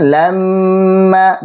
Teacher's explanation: lamma, mim tasydid, panjangkan gunnahnya